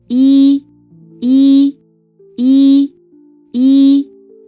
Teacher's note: 呃 With your mouth opens narrowly, lips spread, and your tongue is high and pushed forward.